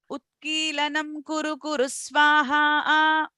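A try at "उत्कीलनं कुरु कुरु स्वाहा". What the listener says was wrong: You have to remember phonetics, huh? Utkilanam Kuru Kuru Swaha. The nga has to be there. Utkilanam Kuru Kuru Swaha.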